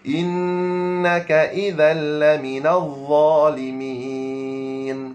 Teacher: zal lidah mesti kena keluar innakaal laminal d lidah mesti kena keluar zalimin lidah kena keluar berapa tuan-tuan sekalian 0.5 cm. · dha lidah mesti kena keluar